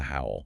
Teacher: The W sound involves rounding your lips and moving directly from that rounded shape into the all. Just merges everything.